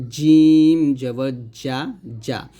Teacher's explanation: জিমটা জিহ্বার মধ্যখান তার বরাবর উপরে তালের সঙ্গে লাগবে জিম জবর যা জিম উচ্চারণ করার সময় দাঁতের দাঁতের সাথে টাচ